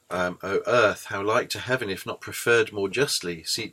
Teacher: Each foot consists of 2 syllables, and the second syllable in each foot is stressed. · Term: iambic pentameter